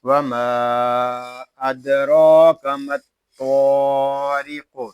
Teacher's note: یہاں قاف ساکن میں کلکلا خوب ظاہر کریں گے